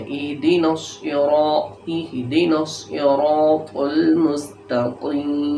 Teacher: ہا، اہدنا الصراط المستقیم، یہاں تو بھی موٹا کرنا ہے، تا نہیں پڑھنا